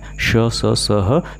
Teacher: वो व्यंजन जिसको बोलने में ऊष्मा हो या संघर्ष हो, तो उस व्यंजन को हम संघर्षी व्यंजन या ऊष्म व्यंजन कहते हैं, और वो है श, स, स, ह।